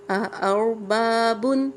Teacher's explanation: اور را کو پر کر کے پڑھیں گے۔